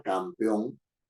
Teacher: tiene una sílaba que es la final, peón, ¿no es cierto?, que es la final, que tiene la mayor fuerza de voz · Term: sílaba tónica